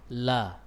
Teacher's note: disitulah lam keluar tatkala bertemu dengan gusi atas. Tempat sama dengan makhrajnya ra.